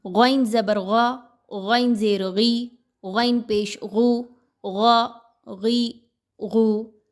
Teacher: یہ موٹا حرف ہے، حروف مستعلیہ میں سے ہے، کسی بھی حالت میں ہو تینوں کنڈیشنز میں زبر زیر پیش کے ساتھ موٹا ہی پڑھا جائے گا